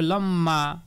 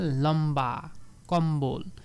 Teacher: ম ব্যঞ্জন বর্ণের সঙ্গে ব ফালা যুক্ত হলে ব এর উচ্চারণ অবিকৃত থাকে